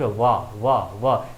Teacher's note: जीभ आपकी दांत के पास जा रही होगी और इसमें आपके दोनों होठों का भी इस्तेमाल होता है वाह बोलने में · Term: दंतोष्ठ